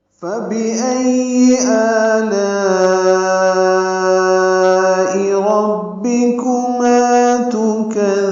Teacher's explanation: کو بھی جلدی پڑھنا ہے اور معروف طریقے سے پڑھنا ہے، حمزہ کو یا سے ملانا ہے، حمزہ اقصی حلق سے ادا ہوگا